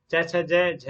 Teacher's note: हिंदी में तालव्य है, लेकिन राजस्थानी में तालव्य भी है और दंत्य भी माना जाता है